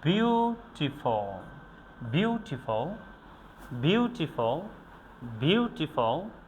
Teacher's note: বিউ এটাকে আমরা স্ট্রংলি উচ্চারণ করেছি, টিফল এটাকে আমরা উইক সিলেবলে উচ্চারণ করেছি